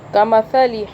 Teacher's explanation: تا کو سافٹ پڑھنا ہے، زبان ہلکی سی باہر کر کے